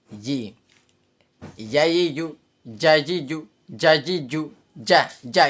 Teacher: জিমটা হচ্ছে জিবার মধ্য একবারে পুরো লাগিয়ে দিতে হবে তালুর সাথে।